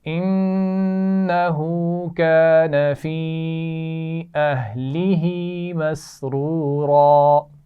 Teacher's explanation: مسرورا دو را ہیں، دونوں کو موٹا پڑا جائے گا